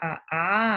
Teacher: A sale del medio de la cavidad bucal, por eso son vocales centrales